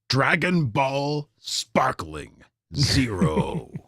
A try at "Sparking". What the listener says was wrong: Sparking. Sparking. read that as sparkling too.